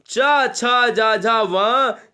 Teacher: ये तालब्य कहलाते, ये तालब्य स्पर्श व्यंजन हो गए